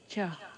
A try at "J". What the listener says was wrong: Không, âm 9 không phải chờ. Âm 9 là âm J. J. J.